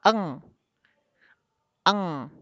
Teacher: Aqsal lisan adalah pangkal lidah. Suara yang dihasilkan dari ikhfa ab'ad adalah suara mendengung.